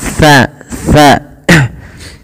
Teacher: Ujung lidah kita ya, kami ulangi. Ujung lidah tempel dengan gigi seri, bertemu dengan gigi seri atas